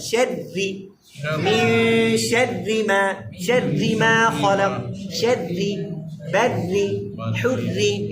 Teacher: দুইটা রায় কি হবে? পাতলা হবে।